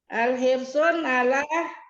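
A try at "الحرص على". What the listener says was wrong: Jangan pakai sun. Jangan pakai tanwin. Karena ada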